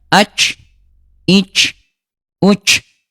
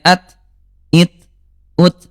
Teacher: huruf ta kalau sukun dia syiddah, dia kuat ya bunda ya, sedikit mengalir ya